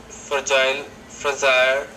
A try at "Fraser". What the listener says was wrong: It's Fraser. Fragile, Fraser. The problem is that second sound. Measure, Fraser, legion, azure, Asia. So you're having some trouble with that palatal consonant sound in lesson number 16.